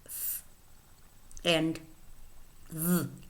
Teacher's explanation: Next, we have labiodental sounds, which are sounds in which the lower lip approaches and touches the upper teeth, and we have 2 sounds, f and v.